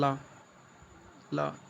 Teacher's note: आप जैसे बोलेंगे ला तो आपका जीभ ऊपर जाएगा और मूर्धन्य से टच करेगा। उस बीच में ला आप बोलेंगे तो आपका जीभ पूरी तरह से ऊपर दंत और मूर्धा में टच होगा और साइड साइड से वायु निकल जाएंगी। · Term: पार्श्विक व्यंजन